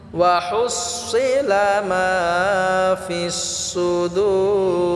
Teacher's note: দূর এটা আমরা 3 আলিফ টেনে পড়ব